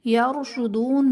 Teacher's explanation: را ساکن سے پہلے یا پر زبر ہے تو یہاں پر را کو پر کریں گے یعنی موٹا کر کے پڑھیں گے